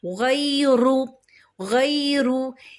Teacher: غین کیا ہے؟ موٹا حرف ہے، اس کو تھوڑا سا پر پڑھیں گے۔ رو کے اوپر دمہ ہے، پیش ہے، رو کو بھی پر پڑھیں گے۔